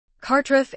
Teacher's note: As in Carrie, he said, and Trev as in the name Trevor. The emphasis is on the first syllable. The R in both syllables is slightly rolled.